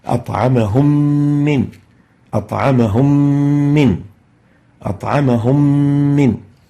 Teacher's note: So merging the still Meem, the first Meem Sakinah, into the second Meem, producing a shadda and ghunnah reflected by the color green. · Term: idgham with ghunnah